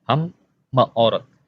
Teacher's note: Schwa yang pertama mati, lalu schwa yang kedua menjadi hidup